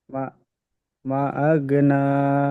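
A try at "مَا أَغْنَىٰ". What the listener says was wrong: মাতে টান দেবেন তো, পূর্বে মাদের পরে হামজা আসছে।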